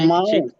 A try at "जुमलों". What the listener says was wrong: नहीं फिर जमाओ तो वहाँ अलिफ आ रहा है, अलिफ तो नहीं है। जमा है, जुमला का जमा है। ज्यादा जुमला को क्या बोलते हैं, वही चीज है ये, क्योंकि एक से ज्यादा सेंटेंसेस है यहाँ। उसको उर्दू में बोलता है, इंग्लिश में सेंटेंसेस बोलता है, उसी का उर्दू में लिखा हुआ है।